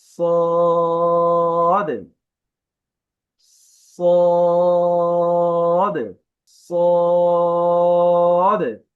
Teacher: আমি শেষেরটা মানে একটু বাড়ি দিচ্ছি আর কি যেটাকে কলকলা বলে